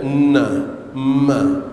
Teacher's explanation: huruf nun dan mim apa keadaan pun dia berdengung